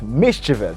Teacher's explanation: the stress falls at the first syllable